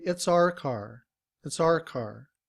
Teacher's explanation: in reduced form we don't say our we reduce it to r